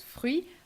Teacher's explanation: You've got a nasal sound with un, jus, le closed U, jus is a juice, de, the neutral E, French E, fruit with the tough R, closed U, and T that you do not pronounce